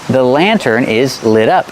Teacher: The T is pronounced like a fast D.